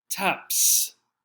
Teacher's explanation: P is a voiceless sound the word ends with P